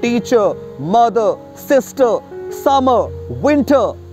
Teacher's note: Agar kisi word ke last mein aapko R sound dikhe, to wahan par R ya to silent ho jata hai ya to soft ho jata hai. R either becomes soft or silent.